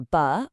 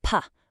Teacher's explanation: They can be voiced, like a buh, or you feel a buzz, or voiceless, like a puh, which is just a puff of air.